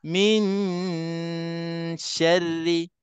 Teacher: Saya habiskan 2 harakat pada nun mati, baru saya sebut shin. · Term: dengung yang salah